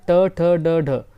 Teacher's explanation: ट ठ ड ढ यह मुर्धा ही होता है